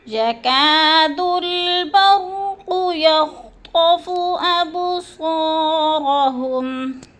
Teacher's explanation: یکا کو ہم نے تھوڑا سا کھینچنا ہے کیونکہ الف مدہ ہے۔ الف خالی سے پہلے کاف کے اوپر زبر ہے تو اس لیے اس کو تھوڑا سا کھینچیں گے۔